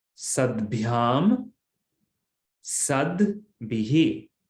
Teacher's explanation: Here the takara becomes dakara because of jashtva sandhi. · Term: soft consonant